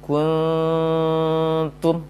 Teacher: Selesai dengung ta yang 2 harokat, baru dimonyongkan bibirnya hendak mengucapkan huruf ta yang dhammah.